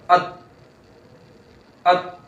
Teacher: جب یہ ساکن ہوگا تا تو آواز بالکل رک جائے گی، نہ آواز لوٹ کر آئے گی نہ سانس آئے گی. جیسے حمزہ تا زبر ات، ات، بالکل آواز سانس بند.